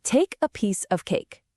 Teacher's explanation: That little puff of air, that crisp, almost sharp sound at the start of take, piece, and cake.